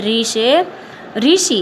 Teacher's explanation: हिंदी में रू का उच्चारण री होता है